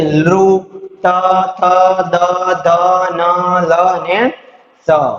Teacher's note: દંત એટલે દાંત. જે વર્ણનું ઉચ્ચારણ કરતી વખતે આપણી જીભ દાંતનો સ્પર્શ કરે એને દંતવ્ય વર્ણ કહેવામાં આવે છે